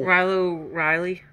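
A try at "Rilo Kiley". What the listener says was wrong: Rilo Kylie. That's a K, right?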